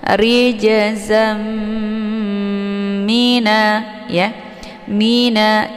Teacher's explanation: Ini dinamakan dengan idgham bi ghunnah. Cara bacanya tanwinnya dimasukkan ke dalam bunyi mim ya, dengan cara ditahan sehingga terbentuk suara yang mendengung. Jadi idgham itu dibaca secara mendengung.